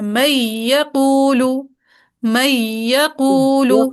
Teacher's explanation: خالص یا کے تشدید کے ساتھ پڑھنا ہے، نون کو بالکل ڈراپ کر دینا ہے، ٹھیک ہے، نون کو بالکل ڈراپ کر دینا ہے اور یہاں پہ تشدید ڈال کے ڈائریکٹ پڑھنا ہے. · نون کا غنہ بالکل بھی نہیں کرنا کیونکہ ادغام تام ہے